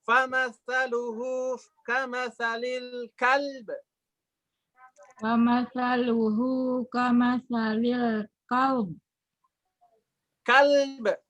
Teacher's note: Nah, dikolkolahkan ba, kafnya dihentakkan sedikit menurut Pak Kiai ya.